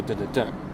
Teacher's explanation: So it's like it's two unaccented and then accented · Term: anapest